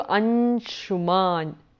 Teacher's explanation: the Anuswara would take on the nasal sound of that group of palatals. So, I would do Anshuman, cha, cha, ja, ja, nya, sh.